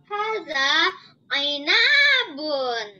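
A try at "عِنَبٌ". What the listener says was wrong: Ainabun, ya, nanya pendek ya. Ada, ainabun.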